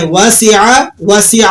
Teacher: ٹھیک ہے, دوبارہ سے سنیں, وَسِعَ, عین کو کھینچے مت, عین کو بالکل بھی مت کھینچیے